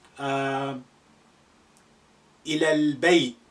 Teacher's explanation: you usually hear kind of sukoon, imaginary sukoon at the end